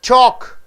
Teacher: What happens to the L sound? L is not pronounced.